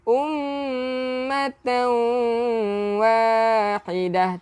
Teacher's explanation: Tanwin tak selari bertemu dengan waw, jadi kena dengung. Yang dipanggil idgham bi gunnah, memasukkan dengan dengung ataupun beserta dengung.